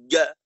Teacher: ইয়া ইয়া ইয়া, একটু হালকা ভাসমান এমনটা থাকবে, একটু ভাসমান এমন অবস্থা থাকবে। যদি একেবারেই মিলাই দিয়ে শক্তভাবে চাপ দেওয়া হয় ইয়া, তখন ইয়াটা জিমের মতো শোনাবে, ইয়ার আওয়াজটা জিমের আওয়াজের সাথে সামঞ্জস্য হয়ে যাবে।